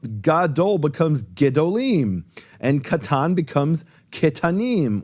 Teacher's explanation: Because the emphasis is now later on in the word, it's gedolim and ketanim, and that forces a shift in Hebrew, turning the kamatz into a shva.